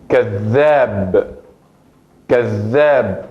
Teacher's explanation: La pronunciación de la zel aquí tiene un punto más enfático, como si fueran dos letras de zel. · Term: shadda